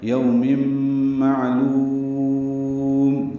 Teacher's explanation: معلوم میں عین ساکن پہ اظہار ہے، لام باریک ہے، لو واو مدہ ہے اور میم ساکن پہ وقفاً اظہار ہوگا۔ یوم معلوم، وقفاً لام کو لمبا کیا اور میم پہ ہونٹ بند کر لیں گے، قلقلہ نہ ہونے پائے